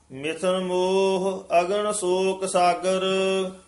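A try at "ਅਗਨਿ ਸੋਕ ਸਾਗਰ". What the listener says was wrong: हां जी मिथन मोह इथे विश्राम है अगन शोक सागर कई बार ना अगन शोक कह जांदे कक्का नहीं बोलदे कक्का शुद्ध बोलना अगन शोक सागर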